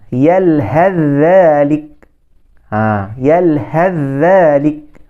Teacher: Huruf tha tu hilang terus bunyinya.